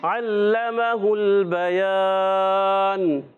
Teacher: اب یہ حرکات کو بغیر کھینچے بغیر جھٹکا دیے معروف ادا کریں گے، اور لام مشدد ذرا رک کر ادا کریں گے، اور میم پر زبر ہے، ہا کی پیش کو ڈائریکٹ لام سے ملائیں گے · پہلا حرف عین، عین ادا ہوتا ہے حلق کے درمیان والے حصے سے۔ عین پر زبر ہے، لام پر زبر ہے، میم پر زبر ہے، ہا پر پیش ہے۔ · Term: حروف حلقیہ